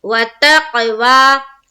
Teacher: खड़ा जबर को एक अलिफ के बाकदर खींच कर पढ़ेंगे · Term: अलिफ मद्दा